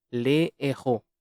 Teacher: There is no liaison, however, with the aspirate H.